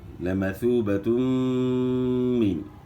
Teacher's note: میم کی زیر کو معروف پڑھنا ہے، مجہول نہیں پڑھنا. نون ساکن کے بعد حروف حلقی میں سے عین آ گیا ہے تو یہاں اظہار ہوگا، یعنی غنہ نہیں ہوگا نون ساکن میں، یعنی لمثوبۃ من عند اللہ.